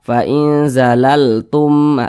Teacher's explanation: adalah idgham mimi atau biasa disebut juga dengan idkam mislain maka cara membacanya itu dengan cara memasukkan kemudian disertai juga dengan gunah atau disertai juga dengan dengungan Nah maka ini dibaca fainzalalum langsung masuk ke huruf mim yang